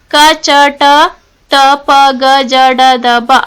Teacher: ಕಚ ಟ ಟ ಪ ಗ ಜ ಡ ದ ಬ ಅಕ್ಷರಗಳು ಅಂದ್ರೆ ಪ್ರತಿ ವರ್ಗದ ಒಂದು ಮತ್ತು ಮೂರನೇ ಅಕ್ಷರಗಳು ಅಲ್ಪಪ್ರಾಣ ಅಕ್ಷರಗಳು